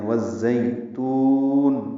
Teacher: واو ہونٹوں کی نا تمام گولائی سے ادا ہوگی اور اس کو زا سے ملانا ہے، زا تیز صفیر کی آواز سے پڑھنا ہے، زئی یا لین ہے، اس کو 1.5 حرکت لمبا کرتے ہیں۔ والزیتون تا کو لمبا کریں گے، وقفاً مد عارض سکون اور نون کی نیچے زیر ہے وہ ساکن ہو جائے گی۔ والزیتون ملانے کی صورت میں تا کو دو حرکات لمبا کریں گے اور نون کی زیر کو پڑھیں گے۔